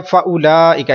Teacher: अब ये मद मुत्तसिल होगी, इसको आपने 3 अलिफ तक आप लंबा कर सकते हैं, 1 अलिफ कर लें, 2 कर लें, जो है वो 3 कर लें, वो आपकी मर्जी है।